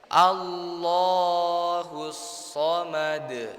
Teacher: Ditebalkan kalimat Allahnya karena itu adalah lafaz Allah yang tafkhim, tebal ya.